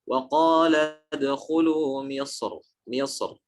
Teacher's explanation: Jadi beliau ketika berhenti pada kata Misr, Imam Ibnul Jazari memilih untuk menebalkan huruf ra-nya. Walaupun ada perbedaan, tapi beliau memilih untuk menebalkan. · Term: tafkhim